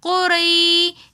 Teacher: یا ساکن اور سے پہلے زبر ہے تو ایسی یا مدہ بن جاتی ہے جس کو ہم ایک الف کی مقدار کھینچ کر پڑھتے ہیں